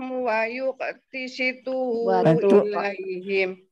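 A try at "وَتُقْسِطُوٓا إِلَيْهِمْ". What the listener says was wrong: Watuk, bukan wayuk.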